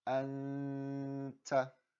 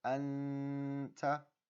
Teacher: you have to hold the noon sound for about one mud · Number two, while you're holding it, you need to feel vibration in your nose. Okay, you should feel a little bit of a vibration, so it does become a bit of a nasally sound. And number three, you're actually going to hide that noon sound. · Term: noon saakin